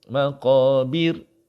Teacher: Bir kena lebarkan mulut kerana ra dimatikan sebelumnya baris bawah. So di sini nipis.